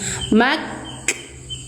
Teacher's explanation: Lepas makhraj kaf baru diikuti percikan nafas atau hames. Mak. Nah, lepas makhraj ikuti hames. · kaf sifatnya syiddah tekan di makhrajnya dulu mad setelah ngelep Lepas makhraj kaf baru diikuti percikan nafas atau hames.